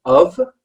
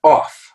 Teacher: the first one as she said is of okay it's not off and the second one is off okay it's a bit more open so you have of which is the schwa again